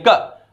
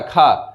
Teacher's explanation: जब का को बोल रहे हैं तो हल्की सी हवा निकले क, जो कि खा को बोल रहे हैं तो ज्यादा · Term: अल्प प्राण